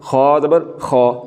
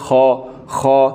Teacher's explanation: जो ज़ुबान का आखिरी हिस्सा है उस ज़ुबान के आखिरी हिस्से को जब हम तालु के साथ मिला देंगे, तालु की तरफ बुलंद करेंगे तो फिर ये खा अदा होगा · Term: पुर